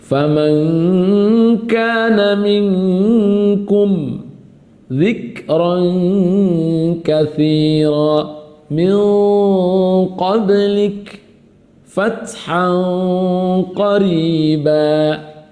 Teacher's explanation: Hurufnya adalah qaf dengan kaf. Nun ujung lisan, qaf dan kaf itu dari pangkal lisan. Dari ujung lisan ke pangkal itu amatlah jauh, maka namanya menjadi ikhfa ab'ad.